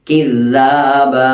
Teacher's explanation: ദാലിന്റെ മഖ്റജ് നാവിന്റെ അറ്റവും മേലെ മുൻപല്ലും.